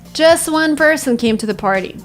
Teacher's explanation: sometimes when letters T and D appear between two consonants, they tend to disappear. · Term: elision